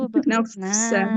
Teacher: fa-nya harus mengalir, Ibu, suaranya. Jangan seperti P ya, tapi seperti F.